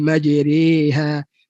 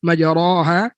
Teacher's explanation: Majriha itu imalah, bukan baris bawah. Baris bawah majri, baris atas majra.